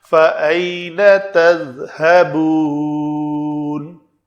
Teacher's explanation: ذال کا مخرج نوک لسان دونوں دانتوں میں نظر آئے، اگر اندر رہے گی تو وہ زا بن جائے گی